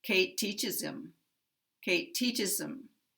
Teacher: Here we will have the primary stress on 'teach' because it's the last stressed word.